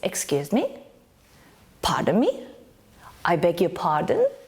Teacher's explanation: Notice that in the 3 of them our intonation rises.